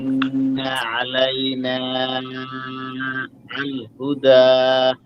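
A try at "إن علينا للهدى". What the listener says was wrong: আলাইনাতে একটু বেশি টান হয়ে গেছে, 3 আলিফের মতো, আর একটু কম হবে।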